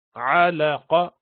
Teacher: خلقنا النطفة, خا بھی موٹا ہوتا ہے, لق, قاف آیا اس کو قلقلہ کرتے ہیں, خلق, خلقنا النطفة, نطفة, یہ نون پر مشدد ہے اس کو غنہ کیا. علقة, علق، قاف موٹا ہے، زبان کی بیس سے اوپر کی طرف لگاتے ہیں جب سافٹ حصے پر